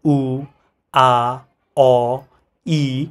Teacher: যেমন তুমি যদি উচ্চারণ করো উ, আ, অ, ই, এগুলোতে দেখা যায় কি বাতাসটা যখন আসতেছে আমাদের যে কোনো দুইটা অর্গান কখনোই কানেক্ট করতেছে না, আর বাতাসটা স্বতঃস্ফূর্ত মানে কোথাও বাধা পাইতেছে না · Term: ভাওয়েল